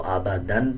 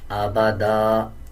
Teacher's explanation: 2 زبر کے بعد جب الف آ رہا ہو وقف کرتے ہوئے ایک زبر پڑھتے ہیں اور ایک زبر سائلنٹ کر دیتے ہیں. اب اس پہ اگر ہم وقف نہیں کریں گے تو آبادن پڑھا جائے گا، اور جب وقف کریں گے تو آبادا اس طرح پڑھا جائے گا